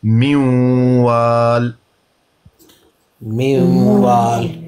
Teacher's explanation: جب اس کے آگے یا، میم، واو، نون ہو تو پھر نون کا مکمل ادغام نہیں ہوگا، نون ادغام ناقص ہوگا، غنہ ہوگا، نون کی آواز باقی رہے گی